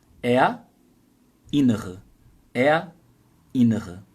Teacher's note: Não vai juntar o R com o I. Você vai falar primeiro ER.